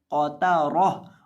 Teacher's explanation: तो यहाँ आपने ता को मोटा नहीं करना बल्कि ता को बारीक पढ़ना है।